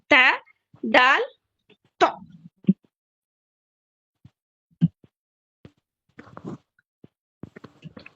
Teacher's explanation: زبان کی نوک اوپر کے دانتوں کے مسوڑوں کو لگنے سے ادا ہوتا ہے. پھر سے بول رہی ہوں میں, زبان کی نوک اوپر کے دانت, جیسا عربک ٹرم ہے ثنایا الیاء کو لگنے سے.